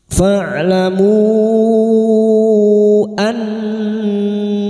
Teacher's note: nun yang bertasdid gunnah musyaddadah kita dengungkan selama 3 harakat. Annallaha lam jalalah yang didahului fathah kita baca tafkim.